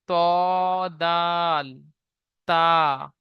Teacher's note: জিভের আগা এবং সামনের উপরের দুই দাঁতের গোড়ার সাথে লাগিয়ে উচ্চারিত হয়